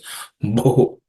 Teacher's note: this Bho is the fourth letter in the Pa class of consonants. It has to be aspirated, so it's Bho.